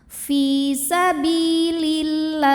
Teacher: Kemudian alif lamnya dinamakan dengan alif lam syamsiyah sebab alif lam menghadapi huruf syamsiyah yaitu lam, maka alif lam ini tidak perlu dibaca